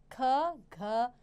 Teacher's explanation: उच्चारण में अधिक जोर लगाना पड़ता है वे महाप्राण व्यंजन होते हैं